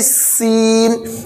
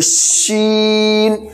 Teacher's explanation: इसमें पतली सीटी रहेगी सीन, इसमें थोड़ी मोटी रहेगी शीन